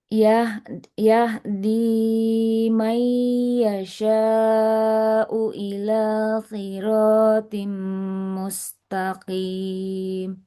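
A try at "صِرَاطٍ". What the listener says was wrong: Jangan si, hati-hati si. Siroti ila siro. Nah, tidak si. Nah, su ila sirotim mustaqim.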